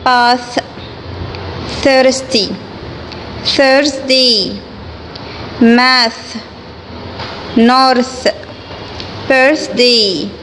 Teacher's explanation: الفويسلس تي اتش، اللي هي بتنطقها ث